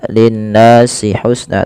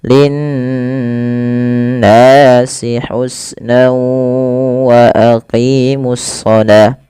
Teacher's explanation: Lafal nun berharakat tasydid itu wajib ditahan suara n ya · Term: gunnah